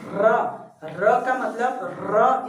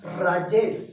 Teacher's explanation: प्रकंपित या लुंठित व्यंजन वे व्यंजन होते हैं, प्रकंप का मतलब होता है वाइब्रेट होना, मतलब जब हम उसका उच्चारण करते हैं तो हमारी जीभ कैसी होती है, वाइब्रेट होती है। जैसे हम र का मतलब र इस तरीके से बोलते हैं तो जीभ देखो हमारी प्रकंपित हो रही है।